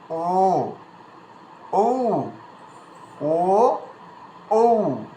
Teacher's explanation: কন্ঠ থেকে সাউন্ড এসে ওষঠ পর্যন্ত আসবে এবং অষ্ট থেকে সাউন্ডটা বের হবে